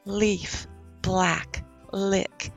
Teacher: you dig into it we actually have 2l sounds we have the regular L where your tongue stays flat